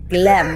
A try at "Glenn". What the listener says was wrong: I'm sorry, are you saying Glem? It's Glenn with an N. isn't a name.